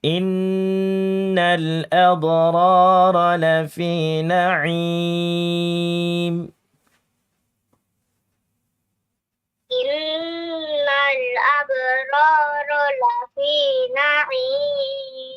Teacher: Sudah bagus, nunnya kurang panjang sedikit gunahnya.